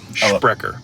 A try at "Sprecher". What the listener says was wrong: No, not Sprecher, just Sprecher. No SC, no SCH. It's like spread.